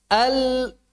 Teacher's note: Nun ketemu dengan tha. Bercampur dengan suara tha. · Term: ikhfa